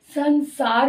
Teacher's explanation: सा का उच्चारण स्थान दंत्य है इसलिए अनुस्वार का उच्चारण स्थान भी दंते ही बन रहा है इसलिए संसार मुख से साउंड आ रही है न की साउंड